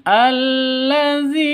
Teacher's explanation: zi panjang, dua ketukan. Karena ada ya mati diawali dengan kasroh, atau sebelum ya mati itu ada kasroh.